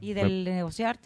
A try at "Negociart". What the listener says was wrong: Y negociar, www.negociart, con T al final, .mx. Negociart, como arte de negociar, negociart.